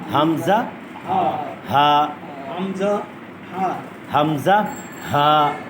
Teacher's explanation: মাখরাজ হলো হলকের শুরু, কণ্ঠনালীর সিনার অংশ শুরু থেকে হবে।